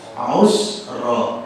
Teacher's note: Roknya karena di fathah, rok tafkhim tebal ya.